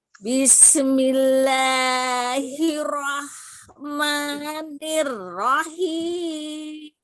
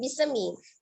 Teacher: sinnya ngalir ya, tidak dipantulkan, bukan bismi.